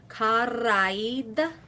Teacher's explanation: the last vowel of kara and the first vowel of aid is elided